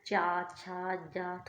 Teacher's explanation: तालू से बोला जाता है तालू, जीभ के ऊपर रहता है